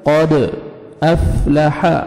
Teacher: قد قاف کو موٹا کر کے پڑھیں گے، دال پہ قلقلہ، یہ لیٹرز حروف قلقلہ میں سے ہے دال، ڈبل ساؤنڈ آئے گا۔ قد افلح، حا کو اچھی طرح اپنے مخرج سے ادا کریں گے۔